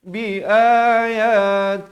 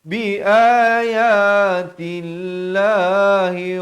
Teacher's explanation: la jalalah dibaca nipis di sini jangan baca tebal